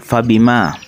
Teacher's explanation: hukum bacaannya mad thabi'i sebab huruf alif didahului fathah cara membacanya dibaca sepanjang dua harakat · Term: mad tabi'i